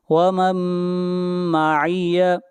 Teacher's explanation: اہلکنی اللہ ومن معی، یہاں پر میم ساکن کے بعد حروف یرملون میں سے میم ہے، ادغام مع الغنہ ہوگا